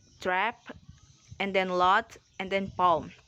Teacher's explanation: when you produce a low vowel you will be able to feel your mouth opening and your jaw dropping